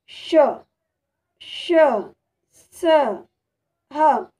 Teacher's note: ऊष्म व्यंजन के उच्चारण में श्वास यानी सांस के तेजी से बाहर निकलने कारण मुख में गर्मी पैदा होती है, यानी ऊष्मा पैदा होती है, यानी हम कहेंगे ऊष्म व्यंजन से श, श, स, ह।